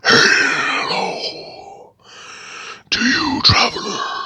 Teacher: He's got his kind of deep, breathy voice.